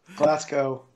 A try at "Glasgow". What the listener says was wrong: Not Glasgow. No, not cow. No, you said it right the first time. You said it more right the first time. Glasgow. Glasgow. Ignore the W. W is irrelevant.